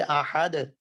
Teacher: احد کی دال دیکھ لو, آواز آپ کی جاری نہیں رہتی, آواز فوراً رک جاتی ہے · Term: صفت شدت